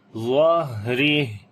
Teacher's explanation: وراء ظہری، ضا کو موٹا پڑھیں گے، ہا کے اوپر صفت ہمس آ جائے گی، سانس کو جاری کریں گے اور صفت رخاوت بھی ہوگی، آواز کو بھی جاری کرتے ہیں۔